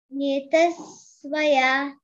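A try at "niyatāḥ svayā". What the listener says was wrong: Very good, very good. Nice.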